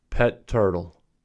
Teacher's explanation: the stopped portion of the sound is held for an extended period of time and then released for example in pet turtle the sound is stopped held for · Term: stop hold release